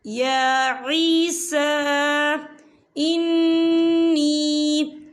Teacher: دیکھیں یا عیسیٰ، سین کے اوپر کھڑی حرکات ہے اور اس پہ چھوٹی سی مد بھی ہے، تو ہم اسے 4 حرکت کے برابر کھینچ کے پڑھیں گے